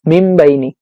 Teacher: এখানে আমরা এই নুন সাকিনকে আমরা মিম বানিয়ে পড়বো। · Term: ইকলাব